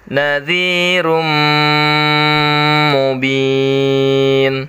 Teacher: suara tanwinnya masuk ke dalam huruf mim ya karena tanwin bertemu dengan huruf mim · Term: Idgham Bighunnah